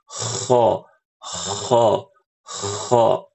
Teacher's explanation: Suara huruf kho yang paling gampang untuk kita cerna seperti kita buang dahak, ya, atau seperti orang mendengkur.